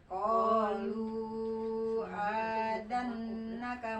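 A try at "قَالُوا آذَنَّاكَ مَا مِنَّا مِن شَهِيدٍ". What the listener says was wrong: mana panjang azannaka panjang kan azannaka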